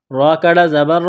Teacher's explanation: را کو موٹا کرنا ہے، ایک الف کے لمٹ میں کھینچنا ہے